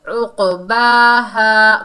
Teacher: کھڑا زبر اور الف مدہ دونوں کو ایک الف کی مقدار کھینچ کر پڑھیں گے